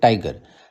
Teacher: टाइगर में टाई को हम लोग तेजी से बोलते हैं, स्ट्रेस देके बोलते हैं, और गर को थोड़ा सा धीरे बोलते हैं। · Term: ट्रोकी